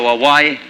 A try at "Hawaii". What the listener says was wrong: There's a lot of difference. One is pronounced with a V and the other with a W.